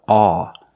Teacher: The vowel is the sound aw. We see this sound in words like call and maul, audio and saw. The sound is in the back here.